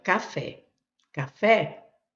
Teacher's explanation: então eu tenho a sílaba forte, é a última